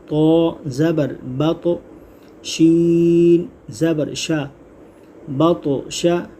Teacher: یہاں قلقلہ ہو رہا ہے، قوف تو با جیم دال، یہ حرف جب ساکن ہوتے ہیں تو ان میں قلقلہ خوب ظاہر ہوتا ہے۔ تو تو ساکن ہے تو یہاں ہم قلقلہ کریں گے